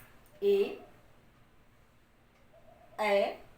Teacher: कंठ पर भी घर्षण हो रहा है और जिह्वा थोड़ी तालु से भी स्पर्श कर रही है, इसलिए इसका उच्चारण स्थान कंठ तालु।